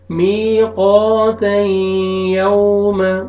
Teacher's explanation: یہاں پہ دیکھیں تنوین کے بعد حروف یرملون میں سے نون ہے، یمون میں سے نون ہے، آپ نے یہاں پہ ادغام کرنا ہے غنہ کے ساتھ